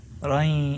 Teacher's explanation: So it's like I'm combining the noon and the ya together.